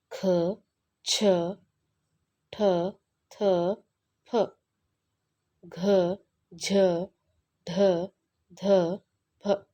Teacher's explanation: ಮಹಾಪ್ರಾಣ ಎಂದರೆ ಹೆಚ್ಚು ಉಸಿರಿನಿಂದ ಉಚ್ಚರಿಸುವ ವ್ಯಂಜನಾಕ್ಷರಗಳು